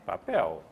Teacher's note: o l no final de palavras é U